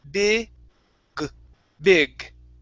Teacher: it's all everything is in the same exact position right but when we pronounce the G it's a voiced sound So you have to use your vocal cords That's where you feel the vibration in your throat